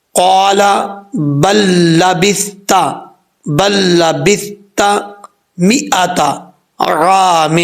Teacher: قال بل لبثت مئتا، اب یہاں پر با کے بعد لام ہے، لام ساکن ہے، اور آگے جو ہے وہ لام آ رہی ہے، اب ادغام ہو رہا ہے ایک لام کا دوسری لام میں